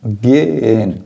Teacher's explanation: Você não precisa se preocupar em pronunciar o H. Você só precisa se preocupar em repetir a vogal anterior ao H.